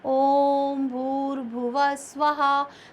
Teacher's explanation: ओम को भी खींच और स्वाहा को भी थोड़ा खींच कर बोला तो यहां पर जो थोड़ा सा दीघा से भी दुगना समय